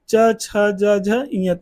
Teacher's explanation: इनका उच्चारण कहां से होता है तालू से होता है